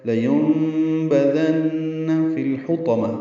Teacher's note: نون مشدد پہ غنہ ہوگا